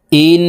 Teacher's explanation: ইন ওয়াজিব গুন্না হরকতের বামে নুনের উপরে তাসদি আছে এই কারণে এই হামজা তাশদি নুনের সাথে নাকের বাঁশি থেকে গুন্না করে পড়বো